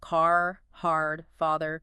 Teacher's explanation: the R sound is nearly always pronounced strongly, whether it's the beginning, middle, or end of words. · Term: rhoticity